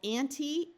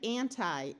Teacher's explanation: this prefix can be pronounced either with a long e or a long I